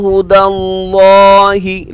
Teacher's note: لفظ اللہ پر ہے موٹا پڑ جائے گا کیوں اس سے پہلے دال کے اوپر زبر ہے